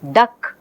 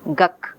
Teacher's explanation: saying duck the child says guk what exactly is happening here the later occurring velar sound ka is influencing the first sound · the later occurring velar sound ka is influencing the first sound. Okay, instead of saying the, which requires moving the place of articulation, the child is staying with velar articulation. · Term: assimilation